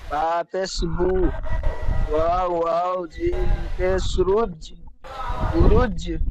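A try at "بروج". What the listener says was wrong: না রুজ, এটা ওয়াও মাদ্দা।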